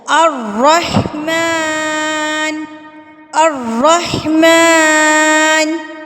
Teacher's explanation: را کو آپ نے پر کر کے پڑھنا ہے، تھوڑا سا ہونٹوں کی شیپ کو گول کریں گے نا تو آپ کا را جو ہے وہ پورا ادا ہوگا